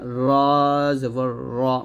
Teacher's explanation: র জিহ্বার আগার উল্টা পিঠ তার বরাবর উপর তালের সঙ্গে লাগবে